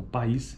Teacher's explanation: durante a articulação de duas vogais em sequência como na palavra país cada vogal ocorre em uma sílaba distinta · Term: sequência de vogais